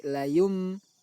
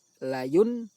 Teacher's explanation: contoh bacaan iqlab berupa nun sukun bertemu ba cara membacanya yaitu mengubah suara nun sukun menjadi Mim dari layun menjadi Layung lalu suara mim tersebut didengungkan Layung dan